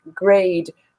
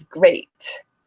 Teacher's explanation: there's a difference in the vowel length because of the d compared to the t